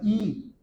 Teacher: अग्र स्वर उन्हें कहा जाता है जिनके उच्चारण में जीभ का अगला भाग ऊपर उठ जाता हो